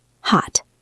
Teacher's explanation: If I speak very clearly, I say hot. I release a puff of air at the end. But in casual conversation, I rarely do that.